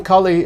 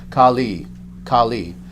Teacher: short a short I with the goddess on the other hand long a long I